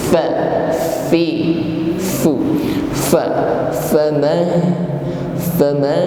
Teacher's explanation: huruf fa makhrajnya ujung gigi bertemu bibir bawah bagian tengah. Ujung gigi menyentuh bibir bawah bagian tengah.